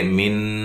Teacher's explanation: یہاں نون ساکن کا ادغام ہے مع الغنہ